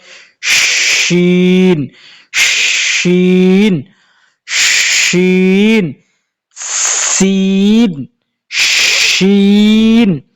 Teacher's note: শিন যখন আপনি উচ্চারণ করবেন তখন মুখ ভরিয়া বাতাস বাইর হবে এবং আওয়াজটাও মুখ ভরিয়া বাইর হবে